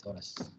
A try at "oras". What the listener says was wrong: H. No, H is silent. Always in Spanish, the H is always silent. That's why you've got the word, but you don't use H. you remove the H.